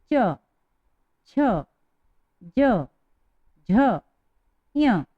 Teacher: अब इस च वर्ग को बोलने में बोलकर देखिए च, छ, ज, झ, ञ। इन पांचों को बोलने में हमारी जिह्वा जो है तालु से स्पर्श कर रही है या तालु से टच हो रही है और ध्वनि बाहर हो रही है, इसलिए इन्हें तालव्य व्यंजन भी कहा जाता है।